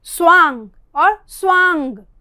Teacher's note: वह में लगा हुआ जो आ है वो अनुनासिक है